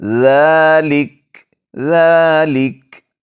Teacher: ذال کو نرمی کے ساتھ ادا کریں گے، سٹی کی آواز بالکل نہیں آئے گی۔